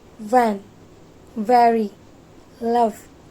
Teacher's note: So let's talk about v sound. It is voiced labiodental fricative sound.